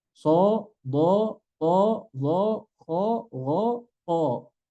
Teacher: Huruf tebal pun nggak boleh monyong. Hanya sampai di o saja.